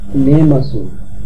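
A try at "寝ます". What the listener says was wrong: নেমাস, হ্যাঁ, নেমাসু বলবো না, আমরা মাস বলবো। হ্যাঁ, বাংলায় উচ্চারণটা আমরা সু বলেছি, অক্ষরের অক্ষর বাই অক্ষর আমি তুলে দিয়েছি, বাট সঠিক উচ্চারণ হবে নেমাস, সু বলবেন না।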